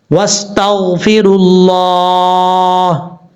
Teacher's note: اس کی وجہ یہ ہے کہ شد والے حرف کے ساتھ ہم نے ملانا ہے, بیچ میں جو ساکن حروف ہیں ان کو چھوڑ دیں گے. اور تا کو جب غین سے ملائیں گے تو غین میں قلقلے سے آپ نے بچنا ہے. وَاسْتَغْفِرُ اللَّهِ, اس طریقے سے.